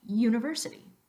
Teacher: put a Y sound a yeah where it doesn't belong